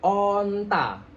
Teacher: Nah, kalau A kan mangap. Kalau O tapi agak monyong dikit. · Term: huruf O